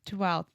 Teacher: So the F in 12th, we don't pronounce at all.